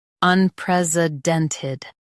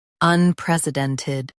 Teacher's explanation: In US, stress pres. In UK, pres is softer.